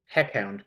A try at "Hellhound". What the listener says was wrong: Oh no. We pronounce the L's.